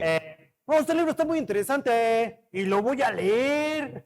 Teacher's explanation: entonces terminas siempre hacia abajo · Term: naco